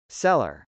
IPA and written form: sˈelɚ (cellar)